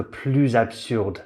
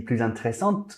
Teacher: Next, if that adverb or adjective that follows starts with a vowel or a silent H, we do the liaison between the S and the vowel or silent H, and it becomes plus.